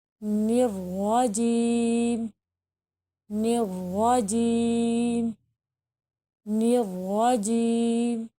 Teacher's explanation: را کو یعنی موٹا پر پڑھنا ہوگا